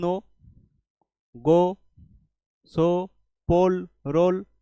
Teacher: সবগুলো লাস্টে যে ও রয়েছে ওগুলোতে কিন্তু উচ্চারণটা ওই আসছে